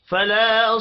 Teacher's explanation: فلا الف مدہ ہے، ایک الف کے برابر کھینچ کر پڑھیں گے